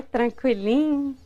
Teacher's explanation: os mineiros alongam demais as letras do meio da palavra e para compensar encurtam final que quase desaparece